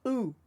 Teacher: there's a dagesh in the vav, so we don't actually say the vav, we only say the vowel sound. And that's why it's oo.